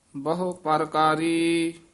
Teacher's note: ਇਹ ਪਰਕਾਰੀ ਉਚਾਰਨ ਕਰਨਾ, ਇਸ ਨੂੰ ਪ੍ਰਕਾਰੀ ਨਹੀਂ ਕਹਿਣਾ ਹੇਠਾਂ ਰਾਰਾ ਲਾ ਕੇ